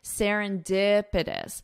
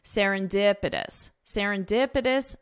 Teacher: So the syllable stress is on dipitous.